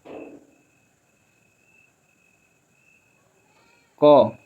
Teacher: क कंठ वर्ण है, अल्पप्राण है, अघोष वर्ण है।